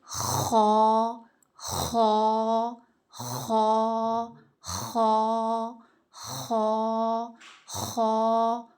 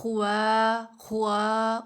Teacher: خوا نہیں کرنا، واؤ کی ساؤنڈ نہ آئے اندر. ایسے اپنا منہ نا سیدھا رکھنا ہے.